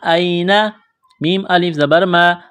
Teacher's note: الف سے پہلے زبر ہے، حروف مدہ الف ہے، ایک الف کے برابر کھینچنا ہے